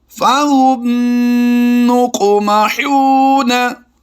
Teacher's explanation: जब भी मीम साकिन के बाद दूसरी मीम आएगी वो मुशद्दिद होगी तो उसमें गुन्ना आने की आवाज़ देंगे। गुन्ना आने की आवाज़ देते हुए हमने बिल्कुल नाक से आवाज़ निकालनी है, नाक में छुपा कर नहीं निकालनी बल्कि नाक से आवाज़ निकालनी है।